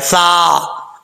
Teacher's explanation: ثا بغیر سیٹی کے پڑھا جائے گا اور اس کا مخرج ہے زبان کا سرا اوپر والے دانتوں کے کنارے سے لگے، اندرونی کنارے سے لگے تو ثا پڑھا جاتا ہے، ثا.